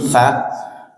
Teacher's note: Kalau yang ini tsa ujung lidah menyentuh gigi seri atas. Beda. Kalau sa sa sin itu gigi bawah.